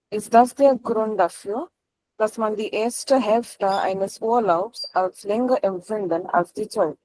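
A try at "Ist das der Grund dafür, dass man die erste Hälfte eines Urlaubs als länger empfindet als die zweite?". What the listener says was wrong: Der Satz beginnt mit einem Verb und am Ende ist ein Fragezeichen nach oben. Intonation nach oben. Your intonation fell at the end. Your tone fell at the end.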